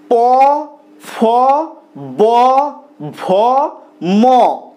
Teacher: জীব কোন জায়গাকে স্পর্শ করছে না কিন্তু উপরের ঠোঁট নিচের ঠোঁটকে স্পর্শ করছে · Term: অষ্ঠ ধ্বনি